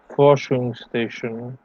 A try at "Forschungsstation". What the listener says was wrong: Exemplary, except we don't say station in German. Station, genauso. Forschungsstation.